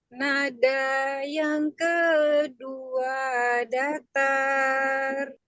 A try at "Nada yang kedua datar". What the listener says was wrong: Dikit lagi ke bawahin lagi.